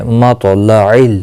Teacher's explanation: مطلع تو مستعلیہ ہے، پر پڑھا جائے گا، ساکن بھی ہے، قلقلہ بھی ہوگا اس پہ کیونکہ حروف قلقلہ میں سے بھی ہے۔